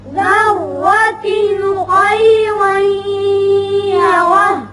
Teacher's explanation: خیرا تنوین کے بعد یا آ گیا ادغام بغنہ